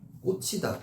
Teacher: 꽂히다 지읒 히읗이 만나서 이건 거센 소리만 되는 거죠.